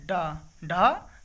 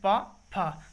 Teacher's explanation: उच्चारण स्थान के आधार पर मूर्धन्य व्यंजन जो होते हैं वो होते हैं डा और ढा